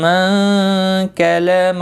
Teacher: نون ساکن کے بعد کاف آیا ہے، اخفاء حقیقی ہوگا، گنہ کے ساتھ پڑھیں گے